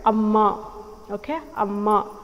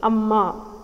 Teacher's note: I'm stressing on the second syllable here. Amma has 2 syllables.